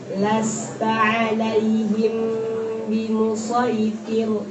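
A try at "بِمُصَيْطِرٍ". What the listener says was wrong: Oh, kebalik. T-nya tebal, R-nya tipis. Musaytir. Musaytir. Musaytir. T tebal, R-nya tipis. Musaytir. Musaytir. Lasta alaihim bimusaytir.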